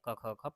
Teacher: कंठ के सहारे से क ख ख पढ़ा जाता है